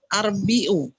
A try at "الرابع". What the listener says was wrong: Huruf pertama selalu panjang, fathah panjang.